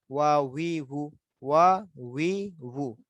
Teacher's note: ওয়াও হলো দুইটা টুট গোল হয়ে যাবে।